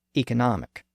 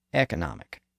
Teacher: One version uses the higher vowel sound E, and the other uses the lower sound E.